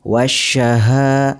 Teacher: huruf alif lam dimasukkan ke dalam huruf yang ada di depannya atau alif lamnya tidak dibaca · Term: alif lam syamsiyah